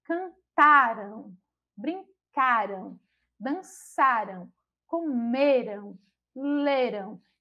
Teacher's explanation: As formas terminadas em an e em ão são pronunciadas de forma diferente. Com a terminação an, as formas verbais elas são paroxítona, tendo a penúltima sílaba como sílaba tônica